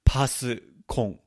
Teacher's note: my accent's going to make it sound like more of an NG sound at the end. It's usually paskon.